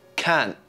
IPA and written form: kɑːnʔ (can't)